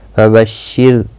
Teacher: فَبَشِّرْ، را ساکن سے پہلے زیر ہے، اس لیے باریک پڑھا جائے گا۔